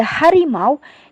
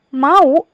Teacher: kata au pada Harimau itu disebut diftong sedangkan pada mau adalah deret vokal